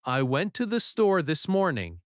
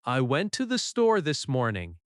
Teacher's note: The stress is on went, store, and morning. The small words are softer.